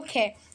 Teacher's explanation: अब बोलो कै बोलते हो और फिर बोलो ख, तो क्या आपको महसूस हुआ कि जो ख बोलते समय हाथ पर हवा अधिक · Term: महाप्रमाण